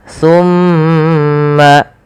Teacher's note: ada bacaan namanya ghunah yaitu suara mimnya ditahan sepanjang dua harakat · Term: gunnah